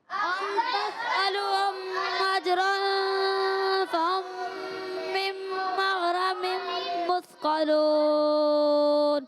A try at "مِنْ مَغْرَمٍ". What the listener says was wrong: اچھا، مم مغرمم ہے، کسی نے مم مغرمن پڑھا ہے، ایسے محسوس ہوا ہے، پیش جیسی آواز آئی ہے کسی کی، جی ہے نا، ایسے ہی ہوا ہے، تو اس لیے آپ نے مم مغرمم پڑھنا ہے، ٹھیک ہے؟